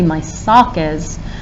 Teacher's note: sock seems stressed it's one that we have to say longer wider louder